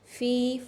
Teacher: فا زیریا فی، یا مدہ ہے، 1 سے 2 الف کے برابر اس کو بھی لمبا کریں گے